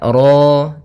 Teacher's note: pada lafal ro di sini ro tafkhim rnya tebal ya kita namakan dengan ro tafkhim. Ro tafkhim rnya tebal maka ro.